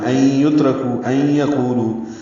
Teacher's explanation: آواز ناک کے بانسے میں لے جائیں گے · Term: ادغام